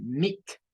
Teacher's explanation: Pueden ver que tiene double E y es el sonido I, ¿verdad? Es un sonido largo para esta palabra